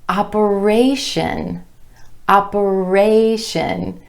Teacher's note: When we add the TION ending, we get operation, operation. Do you hear how the stress shifts to the A vowel sound in our 3rd syllable right before the TION ending?